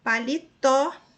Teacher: a última sílaba é a tônica mais forte e termina em O, recebeu acento. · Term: oxítona